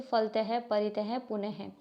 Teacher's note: second है इसका अंग अः अह को विसर्ग कहा जाता है विसर्ग का उच्चारण हल्के ह की तरह एक छोटे से झटके के साथ किया जाता है